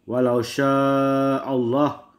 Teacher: mat wajib muntasil, panjangnya 5 harokat. Hamzah pada satu kata, atau mat asli bertemu dengan huruf hamzah pada satu kata.